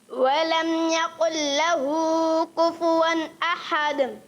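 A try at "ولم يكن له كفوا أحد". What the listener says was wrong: ماشاءاللہ اچھی کوشش کی، اچھا پڑھا، مگر آخر میں ولم یقل لہ، کاف جو ہے تھوڑا موٹا محسوس ہوا. ولم یقل لہ، کاف باریک رہے آخر والا. ولم یقل لہ کفوا احد.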